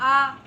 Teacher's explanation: विवृत में बहुत ज़्यादा खुलता है, जैसे आ, हम लोग आ बोलेंगे तो बड़ा मुख खोलते हैं आ, इसके उच्चारण में मुख सबसे अधिक खुलता है।